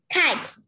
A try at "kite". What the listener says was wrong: Ừ, really good.